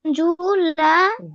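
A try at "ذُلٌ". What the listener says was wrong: জাল পেশ কি হয়? নরম হয় না জাল? জাল নরম করেন, জিহ্বার আগে উপরে দুই টাকার সাথে লাগিয়ে।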